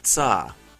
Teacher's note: a fairly common affricate and matches the other alveolar sounds